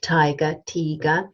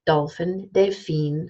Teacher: T, like tiger, tiger, has no voice. D, like dolphin, delphine, has voice.